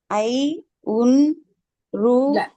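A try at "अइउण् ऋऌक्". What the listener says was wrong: அல்ல இப்படி தனித்தனியா படிக்க கூடாது. அதுக்குன்னு ஒரு ராகம் இருக்கு. ஐ உன் சேர்த்து படிக்கணும்.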